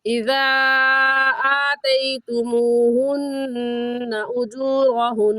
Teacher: اور حروف مدہ کے بعد حمزہ اگلے کلمے میں ہے کیونکہ اذا ایک لفظ ہے اور آتیتموہن دوسرا لفظ ہے تو اس مد کا نام ہوگا مد منفصل اور مد جائز اور اس مد کو 3 الف کی مقدار کھینچیں گے. اور آتیتموہن اجورہن ان دونوں میں نون مشدد ہے اور نون مشدد پر ہمیشہ غنہ ہوتا ہے تو غنہ کریں گے اور ایسے پڑھیں گے اذا آتیتموہن اجورہن.